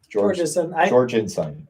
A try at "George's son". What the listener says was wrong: No N in there, but yes, George's son. spelled like it's 2 syllables, but generally it's 3.